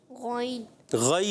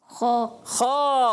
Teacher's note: غین اور خا حلق کے اوپر والے حصے سے ادا ہوتے ہیں